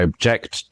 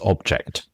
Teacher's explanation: And it's exactly same if I say I object to this object. Object the verb stress on the second object stress on the first.